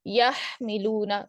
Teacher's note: ہا آپ دیکھیں کہاں سے نکلا، آپ کا وسط الحلق سے نکل رہا ہے. میم آپ کا شفتان سے نکل رہا ہے